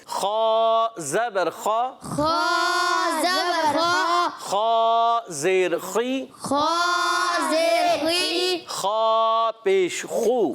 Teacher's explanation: गैन खा हलक के ऊपर वाले हिस्से से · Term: हुरूफे हल्की